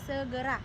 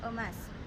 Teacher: bunyi yang dihasilkan dengan cara posisi lidah di tengah caranya tahan bawah dalam posisi Netral atau biasa misalnya Eh pada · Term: bunyi Tengah